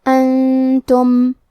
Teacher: کلمت انتم میں نون ساکن ہے، پھر حرف التا ہے. تا حروف الاخفاء میں سے ہے، تو ہم یہ حکم کو غنہ کے ساتھ ادا کریں گے